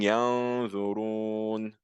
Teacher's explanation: what you're doing is that you're removing the mouth part but you're keeping the nasal sound you're keeping the hunna and the noon or the tanwin so · So al-ikhfa is that you hide the noon or sukun or the tanween by removing the mouth part or the mouth sound, but keeping the nasal sound, the ghunna. So when I'm saying yanzurun, the mouth part of the noon is gone. The n part is gone.